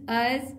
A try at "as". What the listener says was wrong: अस नहीं मुंह को टेढ़ कीजिए थोड़ा सा